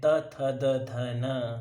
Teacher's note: आप त थ द ध न को बोल के देखेंगे तो आपका जो वर्ड का इंपैक्ट आने वाला है वो आपके दांतों पर आने वाला है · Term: दंत्य